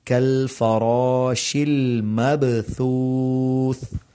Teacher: کالفراش المبثوث، یہاں پر کل فراشل نہیں پڑھنا، یعنی لام پر قلقلہ نہیں کرنا. مبثوث، اب با کے اوپر قلقلہ ہے اور آگے 2 دفعہ سا آ رہا ہے تو اس میں سین کی آواز نہیں آنی چاہیے